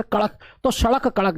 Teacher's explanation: जब आप सड़क पढ़ेंगे सड़क तो तेजी से जीभ नीचे की तरफ गिरेगी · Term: उत्क्षिप्त